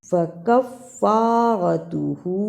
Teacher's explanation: ہا کے اوپر الٹا پیش اور چھوٹی مد ہے، اس لیے اسے تھوڑا سا لمبا کرنا ہے